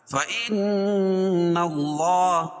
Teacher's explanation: ان نون مشدد ہے، اس میں غنہ ہوگا، غنہ ناک سے ہوتا ہے لیکن چھپا کر نہیں۔